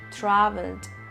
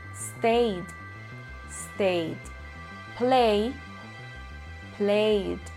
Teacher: En la tercera categoría, pronuncio la ed simplemente como una D